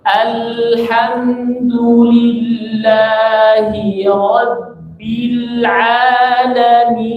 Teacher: Lamnya agak mengalir, tainiyah. Jangan langsung dilepas.